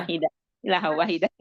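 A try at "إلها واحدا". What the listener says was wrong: itu aja di wakaf kayak kepanjangan. ilah abah hamzahnya mat badal tuh.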